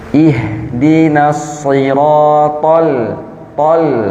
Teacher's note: th temannya da dan ta tapi dia th tebal